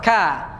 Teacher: Kafnya hamas karena keluar nafas